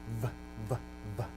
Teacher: V is also a labial, but it's a dental labial